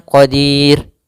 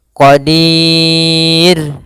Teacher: kita boleh memanjangkan dua harakat boleh pula empat harakat boleh pula En harakat maka boleh kita baca misalnya Qadir dua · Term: Mad ad sukun